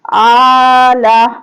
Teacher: اب یہاں پہ ہم الف کھڑا زبر آ کو، حمزہ کھڑا زبر آ کو ایک الف کی مقدار کے برابر کھینچیں گے اور لام کو کھینچ کر نہیں پڑھیں گے، وقف کریں گے تو ساکن کر دیتے ہیں۔